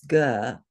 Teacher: So it is the soft, unaspirated ga, no breath sound.